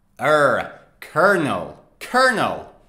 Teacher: say it it's colonel colonel right actually it is kernel colonel the l o in the middle is silent instead you say er